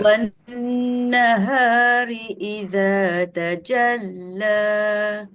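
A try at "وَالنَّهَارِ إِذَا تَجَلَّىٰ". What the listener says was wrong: Cuma yang idza tu pastikan turun sikit je. Wan nahari idza turun sikit je.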